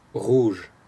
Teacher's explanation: Okay, so the first sound that you hear at the beginning, the R sound, R, is a voiced uvular fricative.